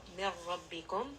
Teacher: And this is going to be idgham without ghanna. So there is no noon sound. No need to bring this up into the nose. Just merge straight from that mim into the ra.